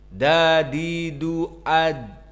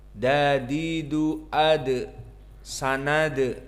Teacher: dal adalah sifatnya jahar dan syiddah, tidak boleh keluar udara dan suara. Berbeda dengan hams dan berbeda dengan ar-rakhawah yang mana keluar udara, nafas, dan keluar suara.